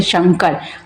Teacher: तालव्य से जो श का उच्चारण हम लोग तालु से करते हैं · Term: तालव्य श